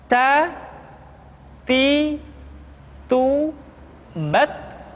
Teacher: huruf Ta ketika diucapkan terdengar ada nafas yang mengalir, atau dalam ilmu tajwid disebut dengan sifat al-hamas.